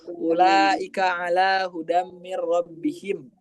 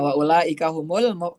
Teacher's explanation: Jadi u-nya tuh tidak panjang, lamnya yang dipanjangin insyaallah.